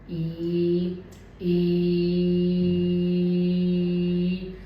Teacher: जब भी इस वावल को आप प्रोड्यूस करेंगे तब जो मेरी जीभ है वो रूफ ऑफ द माउथ के बिल्कुल पास रहेगी। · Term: क्लोज्ड वावल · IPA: /i:/